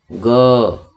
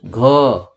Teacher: अंदर गले के अंदर स्वर तंत्र होता है, वहां पे कंपन हो रहा है, तभी आप ग बोल रहे हैं, अन्यथा नहीं बोलते।